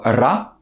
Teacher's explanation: Il y a la lettre ra, qui est prononcée en faisant rouler le R, c'est-à-dire en faisant vibrer la langue